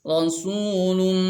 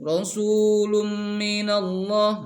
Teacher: Kemudian di sini ada tanwin bertemu mim, idgham bi gunnah. Jadi si tanwinnya dimasukkan ke mim atau dilebur ke huruf mim, nah, sambil disertai dengan dengung